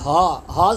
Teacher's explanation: یہاں پر اکثر خواتین حضرات الف پڑھ رہے ہوتے ہیں، رفعہا پڑھ رہے ہوتے ہیں، جو غلط ہے، تو عین پڑھیں، رفعہا، رفعہا۔ ہا، ہا کی ادائیگی سینے سے ہوگی، ہا، ہا سینے سے ادا ہوگا، ہا، ہا الف زبر ہا، اسے 1 انگلی کی مقدار کھینچ کے پڑھیں گے۔